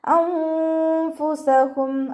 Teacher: നൂൻ സാക്കിനയ്ക്ക് ശേഷം ഇഖ്ഫാഇൻ്റെ അക്ഷരമായിട്ടുള്ള ഫാ വന്നു. നൂൻ സാക്കിനെ മറച്ചു വെക്കുക. നൂനിൻ്റെ സൗണ്ട് അവിടെ വ്യക്തമായിട്ട് കേൾക്കരുത്.